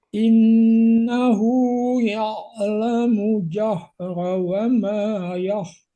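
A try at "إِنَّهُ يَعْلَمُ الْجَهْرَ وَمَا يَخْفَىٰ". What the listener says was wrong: Hati-hati, lamnya harus jelas. Ya'lamul jahra. Mul harus terdengar lamnya. Idhar.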